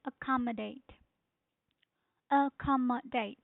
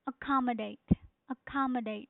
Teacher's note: the stress is on second syllable which is ca